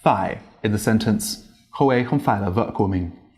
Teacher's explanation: Hanoians, especially when they're speaking quickly, they like to cut out the rising ending of the word. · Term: dấu hỏi